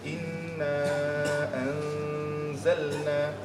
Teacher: nun mati bertemu dengan huruf zai. So hukum dia ikhfa, dia separuh je dengung kan. Inna anzalna, dia nak masuk zai dah tapi tak jadi lagi kan.